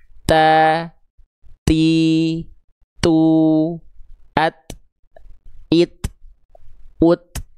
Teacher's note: Huruf ta itu punya sifat dari segi nafas adalah tepercik nafas atau percikan nafas. Ya. Jadi huruf ta itu dilafalkan ada keluar percikan-percikan nafasnya.